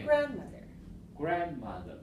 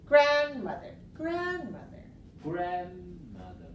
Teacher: So I want you to go high, low, low.